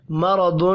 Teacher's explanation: را اور ضاد دونوں پر پڑھے جائیں گے۔ یہاں پر تنوین کے بعد حروف اخفاء میں سے ایک حرف فا ہے، اخفاء حقیقی ہوگا۔